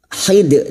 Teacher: dal sukun yang mati di akhir kalimat dan dibaca waqaf qalqalah kubra